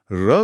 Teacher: र को लुंठित कहते हैं क्योंकि बोलते समय जीभ में कंपन होता है और वह लुढ़कती हुई लगती है